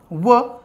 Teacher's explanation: ज्यावेळेस व उच्चारतो ना त्यावेळेस आपले दात आणि ओट हे एकमेकाला टच होतात म्हणून त्याला दंत ओष्ट अस म्हणतात म्हणून ते वर्ण उच्चारतो त्याला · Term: दंतोष्ट